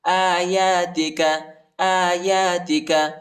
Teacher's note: حمزہ اور یا پر کڑا زبر آیا ہے، اس کو ایک الف کی مقدار تک کھینچیں گے۔